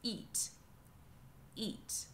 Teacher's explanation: I'm starting with a glottal stop